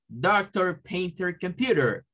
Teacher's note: cuando la r se suena al final de Las palabras se le dice que es un inglés rotico